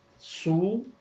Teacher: یہ واو معروف کی پوری آواز ہے